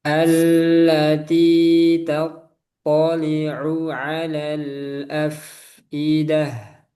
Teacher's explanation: Fa-nya diberi sifat hamas af. Nah, ada aliran udara.